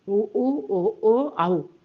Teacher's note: இதல்னா என்னது உதடு. இந்த உதடுகள் குவிவதனால் பிறக்கக்கூடிய எழுத்துக்கள்தான் இந்த ஐந்து எழுத்தும்.